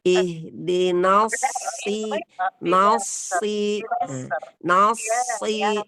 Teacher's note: sempurnakan sifat sofir dan hams pada huruf shad. Ya, karena dia ada sofir ketika bersatu dengan ihdinas. · Ya, karena dia ada sofir ketika bersatu dengan ihdinas. Nas, na-nya tipis, shadnya tebal.